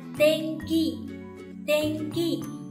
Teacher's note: Như mình có từ Tenki có nghĩa là thời tiết, âm mũi in đứng giữa và phía sau là ki. Ki thuộc hàng phụ âm K nên mình sẽ biến in thành ng và đọc là Tenki